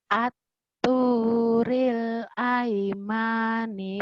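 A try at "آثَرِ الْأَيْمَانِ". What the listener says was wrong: Pendek. Aimani. Aimani. Pendek, gak ada yang panjang. Aturil aimani.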